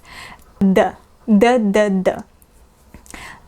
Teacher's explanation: D, the position of the tongue is similar to when we pronounce the letter T, but D is voiced, whereas T is voiceless. It's not exactly the same as the English D. The tip of the tongue touches the upper teeth.